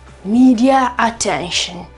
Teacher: This R is inserted between two vowels even if not historically present. · noi inseriamo una specie di R per aiutare a passare alla vocale, alla seconda vocale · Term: intrusive R